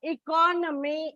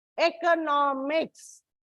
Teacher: When suffixes are added, there is a shift in the stress marking. Like economy, it is on the second syllable. Economics, it's on the third syllable. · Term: stress shift